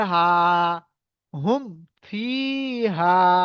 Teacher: মিম সাকিনকে বিনা গুন্নায় তাড়াতাড়ি পড়িতে হবে · তাই মিম সাকিনকে বিনা গুন্নায় জাহির করে পড়িতে হবে